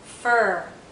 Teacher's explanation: R is probably the most tense sound sound in this group not so much that our lips are tense they are rounded but our tongue has some tension